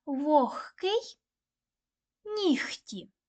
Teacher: звук г перед глухими вимовляють як х